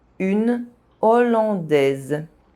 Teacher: the aspirated H prevents consonant links